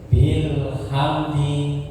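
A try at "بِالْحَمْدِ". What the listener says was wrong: ya, hamnya jangan terlalu cepat. Hamdi ya, seperti itu ya, jangan hamdi, bukan hamdi tapi hamdi, sedikit seperti itu.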